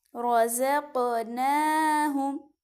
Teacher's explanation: قاف پہ حروف قلقلہ ہے اس لیے اس کی آواز کو ہلائیں گے